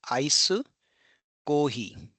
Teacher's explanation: I as in ice. I it is perceived as a combination of a and e.